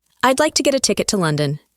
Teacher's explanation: in I'd like to get a ticket to London the words like ticket and London are stressed